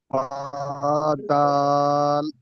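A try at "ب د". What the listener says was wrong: আমার সোনা ভাই, আমি কিন্তু এরকমটি বলে দেই নাই। আমি বলেছি বা, ছেড়ে দেন, তারপরেই দাল বলেন। দাল।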